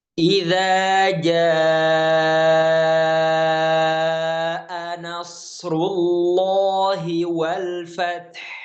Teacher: maka dibaca dengan 4 sampai 5 harokat mad wajib muttasil, ya. Kita contoh tadi aja ya, idza jaa nasrullahi wal fath, kita baca 4 sampai 5 harokat.